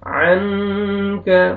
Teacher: نون ساکن کے بعد حروف اخفا میں سے کاف ہے، نوز میں ساؤنڈ لے کے جائیں گے، اخفا کریں گے۔